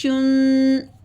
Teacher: شین اب پڑھتے ہوئے آواز منہ میں پھیل جاتی ہے